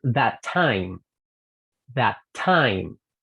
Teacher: cuando una palabra termina con un sonido y es el mismo sonido que empieza la siguiente, sonido consonante, entonces vamos a unirlas y las vamos a linkear